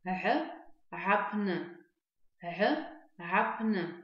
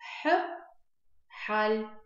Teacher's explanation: Звук Г, он похож на звук Х, да? Только он произносится чуть звонче.